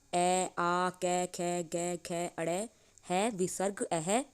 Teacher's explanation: इनका उच्चारण कंठ स्थान से होता है